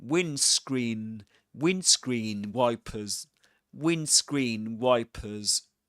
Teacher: And in the word windscreen, you don't pronounce the D. That's a that's a silent letter, I meant to say.